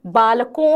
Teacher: अनुस्वार का जब प्रयोग किया जाता है तो मुंह थोड़ा सा बंद हो जाता है और ध्वनि नासिका से प्रवाहित होती है